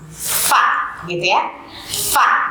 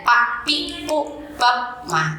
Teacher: Di mana tempat keluar fa itu adalah, gigi seri atas nempel di bibir bagian bawah, gitu ya. Jadi bukan dua bibir bertemu, gitu ya, dua bibir rapat, tidak begitu, tetapi gigi seri atas nempel di bibir bawah